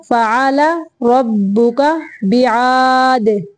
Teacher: दाल को साकिन करते हुए कलकला करेंगे। ये क्यों ये जो है दाल ये कलकला हरूफ में से है।